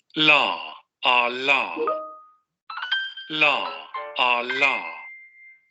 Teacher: Aproximante lateral alveolar sonoro. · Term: aproximante lateral alveolar sonora